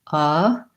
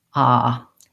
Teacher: instead of having a relaxed central tongue sounding like uh you might make it a little bit more tense and open sounding more like ah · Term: schwa